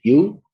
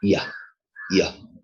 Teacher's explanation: The front of the tongue approximates to the hard palate. Okay, the front of the tongue goes towards the hard palate, and the palatal sound is produced.